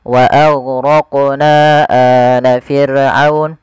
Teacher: Panjangnya 4 harokat atau 5 harokat, tidak boleh dikurangi. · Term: mad jaiz